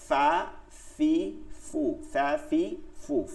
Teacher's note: কিন্তু উচ্চারণটা কিন্তু আমরা যে আরবিতে যেটা করতেছি, জিহ্বার আগা, নিচের ঠোঁটের পেট, সামনের উপর দুই দাঁতের আগা, এইরকম করেই কিন্তু ফা উচ্চারণ হয়